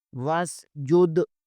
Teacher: واو الف سین وس، وس، جیم دال پیش جد، وس جد، جیم پیش کو دال کے ساتھ ملائیں گے، دال کے اوپر کلکلا ہوگا